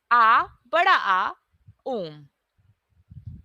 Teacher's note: हम आ बोलते हैं तो कम टाइम लगता है जब हम बड़ा आ बोलते हैं तो थोड़ा सा ज्यादा टाइम लगता है लेकिन जब हम ओम बोलते हैं तो सबसे ज्यादा टाइम लगता है